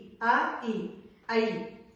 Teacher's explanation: ఐ వలికినప్పుడు ఏమనుకుతున్నాం, ఆ plus ఈ, ఐ, కాబట్టి ఐ అయింది. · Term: సంయుక్త అచ్చులు